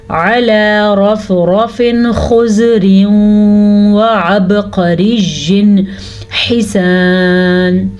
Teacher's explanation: اس کے بعد اظہار کا قاعدہ ہے، یعنی کہ جب کبھی نون ساکن کے بعد یا نون تنوین کے بعد حمزہ ہا، عین ہا، غین خا، ان 6 حروف میں سے کوئی حرف آ جائے تو نون ساکن اور نون تنوین کو ظاہر کر کے پڑھتے ہیں، نہ تو چھپاتے ہیں اور نہ غنہ کرتے ہیں.